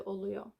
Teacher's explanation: because this is a round vowel, we use rounded vowels in the suffix. So instead of iyor, we use uyor.